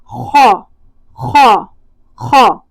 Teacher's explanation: جڑ اوپر کی طرف اٹھے گی، موٹا ادا ہوگا اور منہ میں ہوا آئے گی